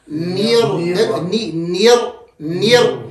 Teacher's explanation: یہ شروع سے را موٹی ہے, نیر را باریک نہیں ہوگی. نیر را, نیر نیر نیر, یہ نون اور را کو جب ملاتے ہیں, نون کو باریک اور را کو موٹا.